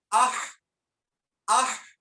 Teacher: ہا، ہا کو ساکن کر کے شروع میں حمزہ مفتوحہ لگائیں گے تو پڑھیں گے اح اح. اب آپ محسوس کریں آپ کا درمیانے حلق جو ہے وہاں پہ وائبریشن ہوگی اح اح. تو یہی ہا کا مخرج ہے.